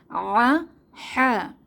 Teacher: এই দুইটি হরফ আসে কণ্ঠনালীর মধ্যখান থেকে বাতাসকে চেপে